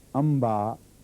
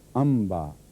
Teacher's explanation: मीम गुने के साथ अदा की गई है